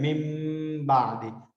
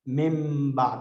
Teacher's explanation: जब राइटिंग में होता है लेकिन साउंड में वो ऐसा लगता है जैसे ड्रॉप हो चुका है। मिम बाद, डबल मीम हम पढ़ लेते हैं, तो इसमें नून साकिन उसके साथ चेंज हो जाता है मीम के साथ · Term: इक़लाब